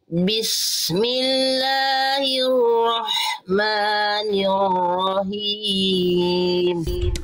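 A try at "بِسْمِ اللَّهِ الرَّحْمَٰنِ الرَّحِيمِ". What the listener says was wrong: Himnya Bunda tinggal him. Ha kecil. Him dari tengah tenggorokan nafas berbisik. Bismillahirrahmanirrahim.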